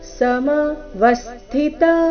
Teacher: ಸಮ ವಸ್ಥಿತ ವ ಮೇಲೆ ಆಘಾತ